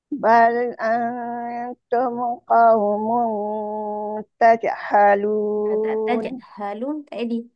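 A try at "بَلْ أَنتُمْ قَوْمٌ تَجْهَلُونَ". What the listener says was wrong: Mim jangan cepat sangat.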